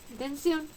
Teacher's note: Tensión es una palabra aguda también, pues el mayor golpe de voz se encuentra en la última sílaba.